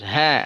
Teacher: Dari tenggorokan paling bawah. Dia punya sifat al-hams. Ya, keluar napas, keluar suara. Berjalan napas.